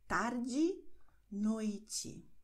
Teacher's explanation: E am Wortende wird wie I ausgesprochen